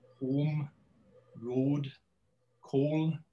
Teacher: It's a simple long monophthong